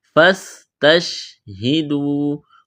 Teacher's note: واو مدہ ہے، الف کے برابر کھینچنا ہے